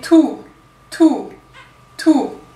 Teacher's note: Tout. Alors sur le ou, la langue va un rien reculer d'1 millimètre, mais vous ne pouvez pas la laisser reculer totalement